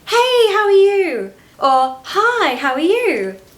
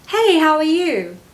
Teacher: Notice that we say this all in one breath. We don't pause between hey or hi and how are you.